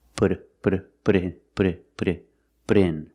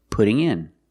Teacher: The T in put sounds like a fast D.